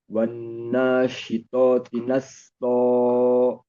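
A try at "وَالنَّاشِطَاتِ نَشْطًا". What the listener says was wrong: Nashto, nashto, shin bukan sin.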